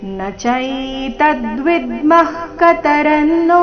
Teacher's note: ವಿಸರ್ಗದ ಉಚ್ಚಾರಣೆ ಅರ್ಧ ಕ ರೀತಿ